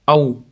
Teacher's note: Aw vovni sukun yaxshi beramiz. Aw lablarimiz cho'chaytirganimizda chiqadi.